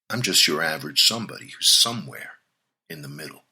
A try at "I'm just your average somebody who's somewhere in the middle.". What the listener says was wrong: Yeah, can you read it again, but this time not with the Ray Liotta voice thing you were doing. Can you, try to be yourself?